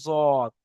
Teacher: সেজন্য করে আজকের জোয়াদের মাখরাজ আমরা প্রথম পড়বো 7 নম্বর মাখরাজ। জোয়াদ, জিভের কিনারা, মানে আমাদের জিভের যে সাইডের অংশ, ধার, এবং তার বারাবার উপরের মাড়ির দাঁতের গোড়ার সাথে লাগিয়ে উচ্চারিত হয়